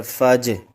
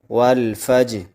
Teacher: جیم پر قلقلہ کریں گے اور قلقلہ 5 حروف پر کیا جاتا ہے جب وہ ساکن ہوں